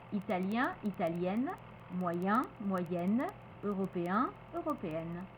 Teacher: On avait un et tout soudain ça devient n, ça se libère. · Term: prononciation nasale